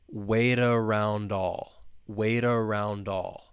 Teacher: sounds with the beginning vowel sound of the next word and that final T in waight you're going to hear me say it with a flap t